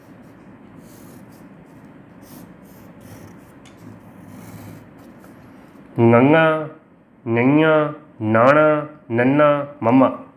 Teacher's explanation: ਉਹ ਧੁਨੀਆਂ ਜਿਨ੍ਹਾਂ ਨੂੰ ਉਚਾਰਨ ਲੱਗਿਆਂ ਆਵਾਜ਼ ਸਾਡੇ ਨੱਕ ਵਿੱਚੋਂ ਨਿਕਲੇ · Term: ਨਾਸਕੀ ਧੁਨੀਆਂ